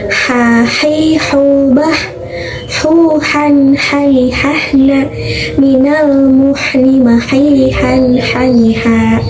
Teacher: Makhrajnya dari tenggorokan tengah juga, seolah-olah seperti mengeluarkan nafas ketika berbisik gitu. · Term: huruf H kecil